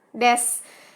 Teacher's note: Penghilangan bunyi huruf vokal, kayak misalnya yang seharusnya penulisannya desu, ternyata kita bacanya des.